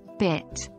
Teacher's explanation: the I sound in bit here your jaw barely moves and your mouth stays relatively closed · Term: closed position